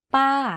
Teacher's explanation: ป ้ า aunt. You can hear from my voice that my pitch went up and then down very slightly. · To say this tone, focus on pitching your voice to go slightly up first and then to fall down at the end of the syllable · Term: falling tone